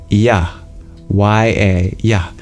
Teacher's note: that's exactly the same as transitioning quickly from the vowel E to the vowel A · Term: semi-vowel